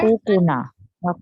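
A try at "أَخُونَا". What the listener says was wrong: Sorry, akhuna. Akhuna. There's no extra ka. akhuna.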